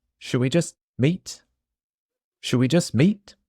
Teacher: notice that the tea at the end of just also disappears